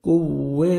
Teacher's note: واو پہ لپس کو راؤنڈ میں لے کے جائیں گے